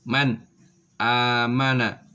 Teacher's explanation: ada nun sukun atau tanwin bertemu dengan salah satu huruf ini maka cara membacanya suara nun sukun atau tanwin nya dibaca jelas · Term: izhar halqi